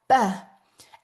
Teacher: that b sound might be our lip sound, where we get our lips really tight together